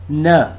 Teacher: it's voiced alveolar nasal sound